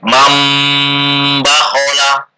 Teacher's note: N menjadi M. Dengan merapatkan dua bibir serta mendengung.